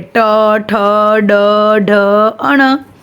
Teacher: फिर है मूर्धन्य, तो मूर्धन्य यानी कि हमारी जो टंग होती है वो थोड़ी सी मूड़ के हम बोलते हैं